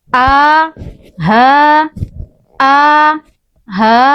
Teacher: Jadi, ada dua huruf yang terdapat pada pangkal tenggorokan.